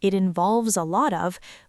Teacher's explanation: When a native speaker says, it involves a lot of, we do not pronounce five separate words. We link them all together into one continuous stream of sound. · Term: connected speech